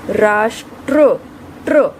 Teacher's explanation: पहले ट की ध्वनि आ रही है, फिर र की ध्वनि आ रही है। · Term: पदेन र